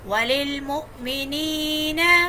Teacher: حمزہ ساکن کو جھٹکا دے کے پڑھتے ہیں. اور یا کہ یاء مدہ ہے, ایک الف کے برابر کھینچیں گے.